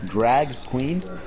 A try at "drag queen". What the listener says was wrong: Why'd you pronounce that like a question? Drag